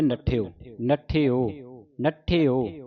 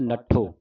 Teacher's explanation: ਵੇਖਣਾ ਕਿ ਇਹਦੇ ਵਿੱਚ ਸਿਹਾਰੀ ਦੀ ਆਵਾਜ਼ ਆ ਰਹੀ ਹੈ ਨਠਿਓ। ਜੇ ਸਿਹਾਰੀ ਨਹੀਂ ਬੋਲਦੇ ਫਿਰ ਬਣਦਾ ਪਾਠ ਨੱਠੋ